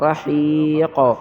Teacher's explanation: زیر حی راحی قاف دو زیر قن رحیق آگے وقف رحیق وقف کی حالت میں ہم قلقلہ کریں گے قاف کو ظاہر کریں گے